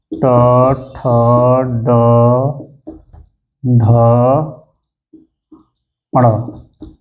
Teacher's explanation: ये कहां से उच्चारित होते हैं मुर्धा से